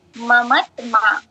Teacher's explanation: দুই জায়গায় আকার থাকার কারণে মাঝের যে বর্ণটা আর লাস্টের যেটা ওইটাতে এই দুই জায়গায় হচ্ছে টান হবে অর্থাৎ দীর্ঘায়িত হবে